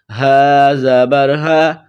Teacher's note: اس ہا کو منہ سے ہوا نکالنے کی طرح پڑھتے ہیں